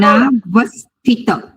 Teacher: વ ઉપર ભાર મુકાવો જોઈએ, પાછળ જોડાક્ષર આવે.